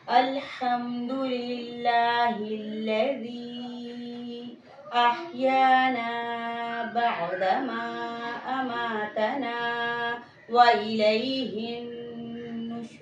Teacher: کہیں بھی کسی حرف کے اندر بلندی نہیں پائی گئی، بلکہ حرف کی آواز جو ہے وہ نیچے ہی رہی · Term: استفعال